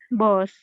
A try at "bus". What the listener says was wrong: Bus. It sounds like your boss. Even though in pronunciation, some people say bus. I usually say bus, bus or bus, but not bus.